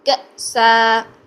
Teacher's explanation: کی آواز کو جھٹکا دے کے بند کرنا ہے، کأسن کأسا، چونکہ زبر تنوین تھی اس لیے ہم نے 2 حرکات لمبا کیا اور الف کے ساتھ زبر کے ساتھ پڑھا